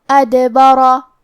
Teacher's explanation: یہاں حرف الرا کا حکم ہے تفخیم کیونکہ اس پہ زبر ہے، لہذا ہمیں را کو موٹی آواز میں پڑھنا ہے